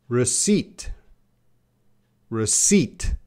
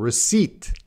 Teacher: There's no P sound. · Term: silent